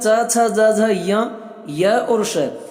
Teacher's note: च, छ, ज, झ, य और श, इन सभी का उच्चारण स्थान तालु है